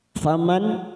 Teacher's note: nun sukun bertemu hamzah idhar halki kita baca jelas.